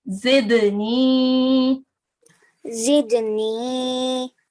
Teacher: it is dal sakin. So it is one of the kalkala letters. Okay, and you need to recite it with a jerk. So zidni. Zidni.